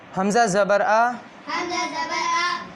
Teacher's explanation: اسے جھٹکا نہیں دینا، جھٹکا نہ ہی مجہول پڑھنا ہے نہ ہی کھینچ کے پڑھنا ہے